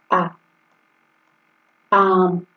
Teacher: बोलिए, तो ये हो गया ना, पूरा मुख खुलता है। आ बोलने में पूरा मुख खुलता है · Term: द्विवृत्त स्वर